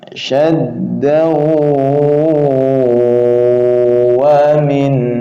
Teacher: Syaddaw ditahan dua harokat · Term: idgham bi gunnah